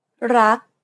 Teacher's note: you want to stop just as the back of the tongue contacts the roof of the mouth. Never release the air of final consonants in Thai words. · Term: final K sound